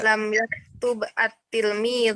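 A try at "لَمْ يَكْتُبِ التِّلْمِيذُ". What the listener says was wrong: Nah, kalau diwasal maka dibaca banyak kasrah. Karena nggak bisa dibaca kan? Maka dibaca lam yaktubit tilmidhu.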